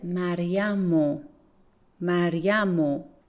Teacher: Pay attention that I omit re sound in Maryam ro. I said Maryamu, Maryamu, because Maryam terminates in a consonant sound, Maryam. · I said Maryamu, Maryamu, because Maryam terminates in a consonant sound, Maryam. And when we add ra, which is in spoken Persian is ro, we omit the re sound and we say Maryamu.